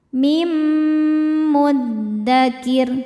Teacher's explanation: Cara bacanya nun dimasukkan ke mim disertai bunyi dengung.